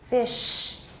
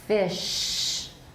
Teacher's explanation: The sh is much louder, isn't it? And you can see it in the waveform.